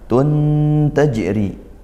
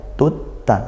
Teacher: Nama tabi'i tun tajri, ikhfa haqiqi, tanwin bertemu tak, dibaca samar. Dibaca samar, tidak jelas, tidak juga masuk gitu ya. Samar dan dengung.